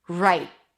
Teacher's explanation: Right. So round your lips for the R, change it to an I as in my, right, and bring the tongue up for a T sound at the end. Right. You can release the T, right, very lightly, or hold it, right, for a held T.